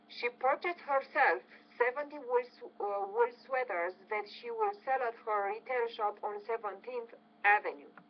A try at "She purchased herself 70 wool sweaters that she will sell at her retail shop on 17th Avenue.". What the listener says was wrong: Okay, not bad.